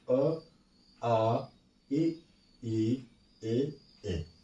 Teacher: जिन स्वरों के उच्चारण में ओठ वृत्तमुखी यानी गोलाकार ना हो वे आवृत्तमुखी स्वर होते हैं